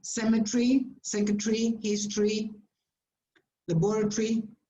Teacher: when you have long words and the stress in English goes on the first syllable, the one in the middle disappears. Almost disappears sometimes, okay?